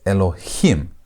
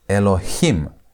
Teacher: That's where you put the emphasis on the last part.